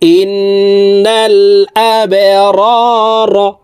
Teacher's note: বা কলকলার হরফ নিচের দিকে ধাবিত করে ধাক্কা দিয়ে উচ্চারণ করতে হবে